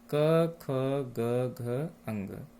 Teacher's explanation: कंठ से उच्चारित होने के कारण कंठ वर्ण कहलाते हैं